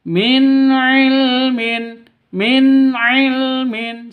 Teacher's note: nun mati bertemu dengan ain izhar halqi tidak boleh sentak tidak boleh didengungkan bacanya min ilmin min ilmin seperti itu.